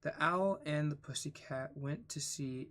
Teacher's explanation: It's almost impossible to read the first line without introducing pauses between went and to see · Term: waltzing rhythm